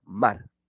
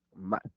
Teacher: Mar. Bilabial, abierta, vocal y vibrante.